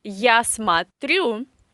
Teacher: So я смотрю, you say a in the first syllable because o is in the unstressed position. If o is without stress in any Russian word, we should pronounce this o as a. · The stress is on the last syllable. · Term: Russian reduction